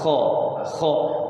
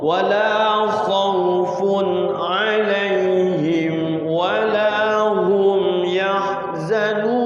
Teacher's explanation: Kho itu di sini, di atas tenggorokan. Kho. Wala khaufun alaihim wala hum yahzanun.